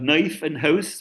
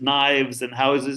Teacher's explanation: the so-called Canadian raising, where you have knife and house versus knives and houses depending on whether a voiceless or voice segment follows